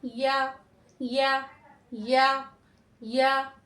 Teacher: अब यहाँ में थोड़ा सा क्या है कि हम इसको पूरा नहीं लगाएंगे। ठीक है, हम तालु के करीब रखेंगे लेकिन पूरा नहीं लगाएंगे, और नरमी के साथ आसानी से अदा होगा